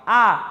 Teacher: eu não tenho a interrupção pela minha língua ou pelo meu dente, ou pelo lábio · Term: som vocálico